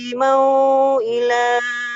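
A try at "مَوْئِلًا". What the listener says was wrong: ini pendek mau ila nah, mau ila gitu.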